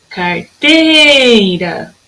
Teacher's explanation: O meu rá não é a sílaba mais tônica. Minha sílaba tônica na palavra carteira é o teira. Então, a carteira não faz parte de palavras oxítonas, porque a sílaba tônica dela é a penúltima e não a última.